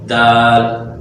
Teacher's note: جب دال کو ادا کرنا ہے تو اس وقت طریقہ یہ ہوگا کہ جو ہماری زبان کی نوک ہے یعنی سامنے والا حصہ، یہ اوپر کے سامنے جو دو دانت ہیں ان کی بیک سائڈ کو ٹچ کرے گی، اس سے جو آواز نکلے گی وہ ہوگی اصل آواز دال کی، دال۔